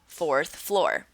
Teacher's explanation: when you say “fourth floor,” you've got two cases of the ending /ɹ/ there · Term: ending R